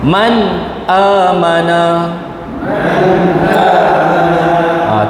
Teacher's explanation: tanda sukun bertemu dengan hamzah Jadi jelas tanpa dengung jangan baca Man amana ya Dia kena jelas kat situ ataupun